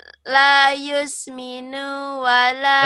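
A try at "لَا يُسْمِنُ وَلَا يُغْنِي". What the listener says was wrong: Kenapa panjang? Kenapa nunya panjang? Kagok ya. La yusminu wala.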